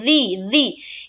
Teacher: زبان کی نوک سے دونوں دانتوں کو سٹائیں گے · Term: ذال